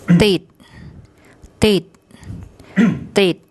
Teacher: Okay, the to tau initial consonant, the short I vowel written above, and dordek as a final consonant, which makes an unreleased T sound